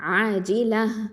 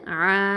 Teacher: அலிஃப் மத்து ஆ 2 ஹரக்கத்தை நீட்டணும்